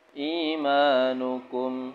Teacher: Mimnya dibaca jelas, gak boleh dengung. Idhar syafawi.